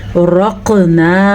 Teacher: क़ाफ़ पे कलकला और रॉ पुर पड़ी जाएगी। और मद का आपने ध्यान रखना है।